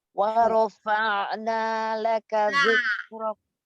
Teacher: akar lidah jangan ngangkat, biar tipis a-nya